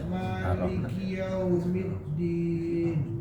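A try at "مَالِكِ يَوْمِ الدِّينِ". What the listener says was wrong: Maliki jangan yau Pak.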